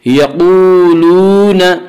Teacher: واو مدہ کو ایک الف کے برابر کھینچ کر پڑھیں گے۔